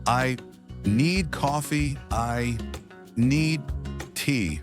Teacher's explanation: Notice how need is strong. English is a rhythm language. Some words get more stress.